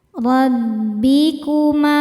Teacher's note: Huruf ro dibaca secara tafkhim karena berharakat fathah. Cara bacanya ditebalkan.